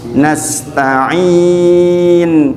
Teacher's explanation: sin di sini jangan lupa sifat sofir dan hamznya. Jangan lupa ada desis dan ada angin.